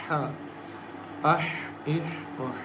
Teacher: Ha comes from the middle of the throat